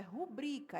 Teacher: As pessoas falam rúbrica, só que não tem acento no ru. Não tem acento no ru, gente. · A palavra rubrica não tem acento, vai ter um acento prosódico, no bri. Então, é rubrica, é paroxítona.